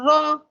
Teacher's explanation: और मुशद्दद हरफ को मजबूती और जमाओं के साथ पढ़ेंगे, जैसे जा रा जेर जिर, ताज़ीलल अज़ीज़िर, रॉ के ऊपर जबर है और जबर होने की वजह से हम रॉ को मोटा पढ़ेंगे